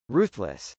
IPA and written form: rˈuθləs (ruthless)